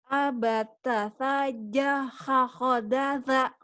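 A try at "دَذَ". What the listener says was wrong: Ambata sajahakhodaza. Daza. Da keras za. Daza. Ya, bukan dada. Daza. Daza.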